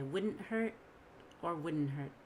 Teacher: It's also possible to say wouldn't hurt without a T, just wouldn't hurt. I don't have to have the held T.